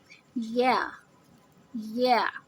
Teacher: اپنی زبان کو درمیان سے اونچا کریں گے تو یا کی ادائیگی ہوگی